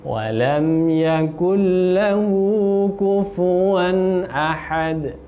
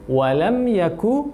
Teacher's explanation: lamnya tanpa dengungan, jelas. Yakul lahu, pastikan membaca dengan sesuai hurufnya, yaitu kaf.